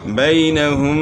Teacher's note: یہاں یا لین ہے، یا ساکن سے پہلے زبر ہے تو یہ یا لین ہے، اس کو نرمی سے پڑھیں گے